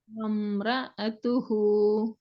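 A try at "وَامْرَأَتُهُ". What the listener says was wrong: அந்த இடத்துல நீங்க சரியான அலிப்புக்குரிய டைமிங்க குடுக்காம ஓடினது தான் உங்களோட ஓதல் பிழையாகிறதுக்கான அடிப்படை காரணம். அந்த இடத்துல நீங்க டைமிங்க உச்சரிக்கிறதுக்கும் உச்சரிக்கிறதுக்கும் இடையில உரிய நேரத்தை சரியா நீங்க ஃபாலோ பண்ணீங்கன்னால் உங்களுக்கு இது ஒரு பெரிய மேட்டரே இல்லை. நீங்க 2யும் ஜாயின் பண்ணித்தான் ஓதி ஓதி ஓதி ஓதி ஓதி ஓதி ஓதிக்கிறதால அது பின்னோ பெரிய விஷயமாக மாறுது.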